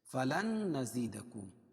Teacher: نون ساکن ادغام مع الغنہ ہو گیا